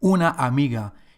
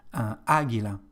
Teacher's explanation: the stress in this word amiga is on second syllable